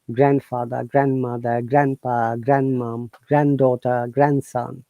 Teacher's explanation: D is always silent in these words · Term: No D sound